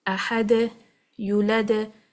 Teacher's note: Qalqalah wusta, on the other hand, is when you are applying a waqf on a letter of qalqalah, when this letter has a sukoon, which is a permanent sukoon, or a temporary sukoon like here, due to stopping reasons. So the qalqala sound would be wusta, which is the medium sound. Ahad, yulad, and again, we are not reading anything after it due to applying the qalqala with the waqf.